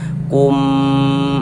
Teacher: mim sukunnya ini bertemu dengan huruf mim, maka hukumnya idgham mimi. Ah, kita dengungkan. Nah, sepanjang dua harakat. Kum. Nah, di bagian kumnya itu suaranya itu kita tahan, kita panjangkan sejenak.